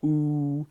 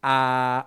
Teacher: a ooh would definitely be like that the lips are coming out ooh versus a ah where the Jaws coming down